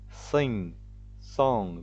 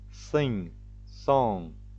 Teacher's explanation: Veja que o G é mudo e você usa apenas o som nasal de N.